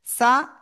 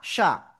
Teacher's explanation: সিন জবর সা, শিন জবর শা, এটা চিকুন আওয়াজ, এটা শা শা শব্দ করে আওয়াজ।